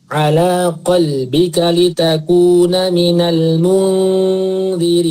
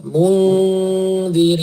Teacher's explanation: itu nun ketemu dal. Itu ditahan dulu, berdengung selama 1,5 alif.